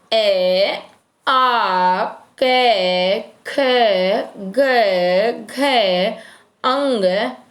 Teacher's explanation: जब इनको हम उच्चारित करते हैं तो जो ध्वनि है हमारे कंठ से निकलती है।